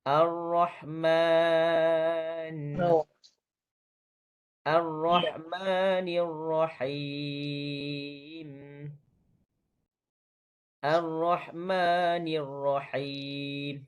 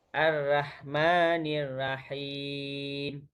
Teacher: Yang pertama ialah hujung lidah ra yang tebal, pangkal lidah, minta maaf. Pangkal lidah ra yang tebal naik ke langit atas. Naik ke langit lembut.